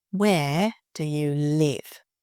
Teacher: Showing the stress on the where and the live.